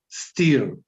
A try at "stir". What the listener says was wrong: Stir. stir. Ojo que no se confundan con steer. Si me cierra mucho la I, suena a como estar en el volante. Steer the car. En realidad no tanto un carro, un bote, por ejemplo. You steer a boat.